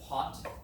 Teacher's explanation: take your hand and you'd say pot you'll feel air with your hands · In English we say more of an aspirated p. It's more of there's more air that comes out of our mouth.